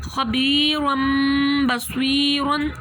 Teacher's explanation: خبیرم بصیرن، 2 زبر آئے، اس کے بعد آیا ہے با، اب 2 زبر کی جو آواز ہے اس کو میم سے چینج کر دیں گے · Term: اقلاب